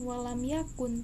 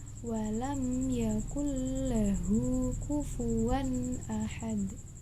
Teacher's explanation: Jadi langsung dimasukkan ke huruf berikutnya, bukan walam yakun, tapi walam yakul lahu kufuwan ahad. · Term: idgham bila gunnah